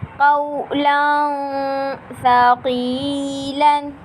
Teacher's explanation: قاف واو زبر قو، لام دو زبر لن، قولن، ثا زبر ثا، قاف یا زیر قی، ثقی، لام دو زبر لن، قولا ثقیلا۔ تنوین کے بعد حروف اخفا کا سا آ رہا ہے، اس لیے یہاں پر غنہ ہوگا، یعنی غنہ کر کے ادا کریں گے